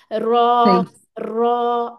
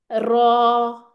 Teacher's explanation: इसमें थोड़ी तकरीर भी आती है ठीक है वाइब्रेशन आती है